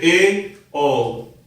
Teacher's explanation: जिन स्वरों का उच्चारण करते समय जीभ आधी से ऊपर उठती है अर्थात पूरी ऊपर ना उठकर आधी ऊपर उठती है, उन्हें क्या कहते हैं अर्ध संवृत स्वर।